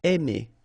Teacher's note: remember when you combine A and I, then you get the sound E. Really open, E.